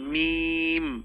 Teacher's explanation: ঠোঁটের শুকনা জায়গা থেকে মিম দুই ঠোঁট থেকে